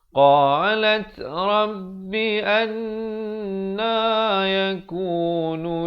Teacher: Wajib dengung 2 harakat. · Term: wajibul gunnah